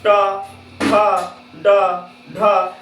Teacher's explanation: टवर्ग का जो उच्चारण स्थान होता है, आप बोल के देखिए, ये जाके आपका टकराता है मूर्धा से, या आप इसको मूर्धन्य भी कह सकते हैं, आप इसको मूर्धन्य भी कह सकते हैं। · बोलिए ट ठ ड ढ जब आप बोलते हैं तो जो आपका फेफड़ा से हवा निकलता है वो जाके आपका मूर्धा में टकरा रहा है